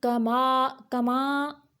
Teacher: ما کی آواز جو ہے یہ منہ سے نکالنا ہے، ناک کی طرف نہیں لے کے جانا آواز کو